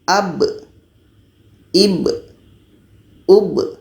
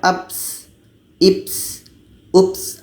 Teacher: tapi kita Bacanya adalah secara jahar jelas dan ada qalqalahnya ada pantulan